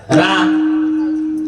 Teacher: राने अशी जीभ झटकते, तोंड उघडत, थोडी हवा बाहेर जाते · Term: रकार